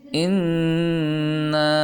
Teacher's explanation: ناک میں آواز لے کر جائیں گے، یعنی غنہ کریں گے